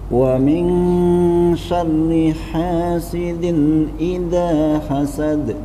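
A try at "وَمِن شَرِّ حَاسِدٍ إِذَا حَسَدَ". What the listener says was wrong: Dinnya ditambahin lagi. Hasidin idza. Nah, sama D-nya dijelaskan lagi, D-nya.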